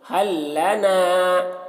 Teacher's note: حل لنا، یہاں پر دیکھیے لام ساکن ہے اور پھر یہاں پر لام مشدد ہے، تو جب ساکن اور مشدد حرف ایک ساتھ آ جاتا ہے تو ساکن حرف کو نہیں پڑھتے، تو یہاں پر لام ساکن کو نہیں پڑھیں گے، ہاں کو لام سے ملا کر پڑھیں گے۔